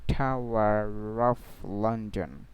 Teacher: So pronunciation of final R will be completely silent if a consonant followed by, but if a vowel comes, if the final R followed by a vowel sound, then the R will be pronounced like one word with that vowel